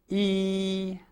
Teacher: This is made by raising the rear part of the tongue and relaxing the front of the tongue while you relax the lips. Sometimes the lips are drawn slightly to the side.